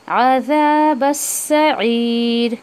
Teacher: फिर यहाँ पर बा को आप सीन में मर्ज करेंगे